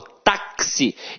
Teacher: o X aqui tem som de KS. Ou seja, uma letra tem 2 sons. Quando uma letra tem 2 sons, eu chamo de dífono.